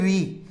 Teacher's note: मूर्धन्य स्वर, इनका उच्चारण करते समय हमारी जिह्वा है मूर्धा भाग का स्पर्श करती है